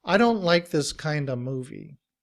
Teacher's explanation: in reduced form, we don't pronounce the V at the end of. We just use the schwa sound, Kind remains the same, but we blend the sounds together to produce kinda.